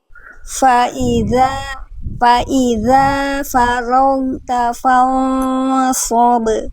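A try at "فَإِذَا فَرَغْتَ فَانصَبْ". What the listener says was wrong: Oke, ghoinnya tinggal dialirkan lagi sedikit. Ghoin itu nanti di buku juga ada salah satu ketidaksempurnaan, bukan kesalahan besar, tapi ketidaksempurnaan ketika kita melafalkan huruf ghoin suaranya kurang ngalir. Faragta, jadi dialirkan suaranya. Faiza faragt ya. Faiza faragta fansab.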